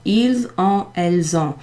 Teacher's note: the S is pronounced in front, so ils ont. It's kind of a Z.